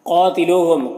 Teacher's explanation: یہاں پر الف سے پہلے قاف کے اوپر زبر ہے تو الف مدہ ہوا ہے، اسے ایک الف کے برابر کھینچ کر پڑھیں گے۔ یہاں پر واو ساکن سے پہلے لام کے اوپر پیش ہے تو واو مدہ ہوا ہے، اسے بھی ایک الف کے برابر کھینچ کر پڑھیں گے۔ یہاں پر میم میں اظہار شفوی ہو رہا ہے، اسے جلد پڑھنا ہے۔ · قاتلوہم، قاف یہاں پر حروف مستعلیہ میں سے ہے تو قاف کو پر پڑھیں گے۔ یہاں پر الف سے پہلے قاف کے اوپر زبر ہے تو الف مدہ ہوا ہے، اسے ایک الف کے برابر کھینچ کر پڑھیں گے